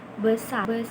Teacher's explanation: Taling. Nah, E itu dibentuk dengan mulut setengah terbuka dan lidah itu netral, seperti pada kata besar, setengah terbuka dan lidah itu tetap netral. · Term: E pepet